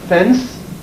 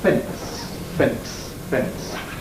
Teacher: Plosive epenthesis. This is a habit that many people have of inserting a plosive between a nasal and a voiceless fricative, most obviously in NS sequences, so that where I would speak of a fence, many people will pronounce fence, fence, fence.